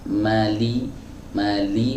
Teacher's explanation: huruf lam ini bagian lidahnya yang melekat ke langit-langit bagian depan